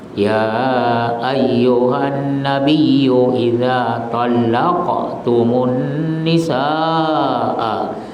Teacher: Alif dan hamzah dalam satu kalimat ini mad wajib muttasil, sekurang-kurangnya 4 harakat, tidak boleh pendek. Mad wajib muttasil, wajib dipanjangkan.